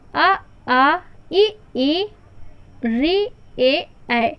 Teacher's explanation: ऐसे स्वर हैं जिनके उच्चारण के समय हमारे ओष्ठ आकृति जो है वो वृत्ताकार नहीं होती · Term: अवृत्ताकार